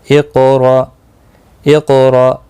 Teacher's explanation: حمزہ ساکن کو جھٹکے کے ساتھ پڑھا جائے گا · قاف مستعلیہ ہے پر پڑھا جائے گا، قلقلہ بھی ہوگا